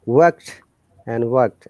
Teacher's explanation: in british ipa r is silent in this word